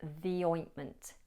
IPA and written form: ði ˈɔɪntmənt (the ointment)